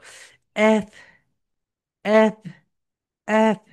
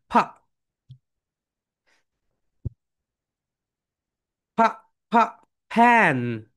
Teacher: যখন তোমরা এফ উচ্চারণ করবে তোমাদের উপরের দাঁত, উপরের দাঁত নিচের ঠোঁটের সঙ্গে হালকা টাচ করবে, এবং এই টাচটা যদি না করে তাহলে এটা রং প্রোনাউন্সিয়েশন হবে।